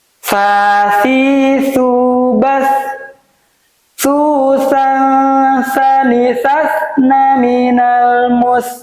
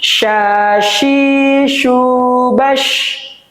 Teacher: Yang pertama sa ini lebih tipis, yang sya ini lebih tebal.